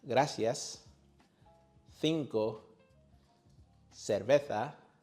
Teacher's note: In most of Spain, many speakers pronounce C and Z with a sound similar to the TH. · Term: The TH sound